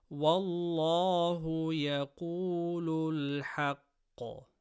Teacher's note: Lam of Allah after fatha, full mouth. Qaf from khussa daghatin qidh, full mouth.